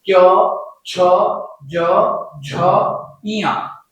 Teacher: क्योंकि इनके उच्चारण में जीव तालू को स्पर्श करती है और मुख से वायु कुछ घर्षण के साथ बाहर आती है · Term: स्पर्श संघर्षी